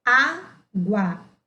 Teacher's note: na palavra água, o A tem um som mais forte do que o U. Por isso que o A é chamado de vogal e o U semivogal.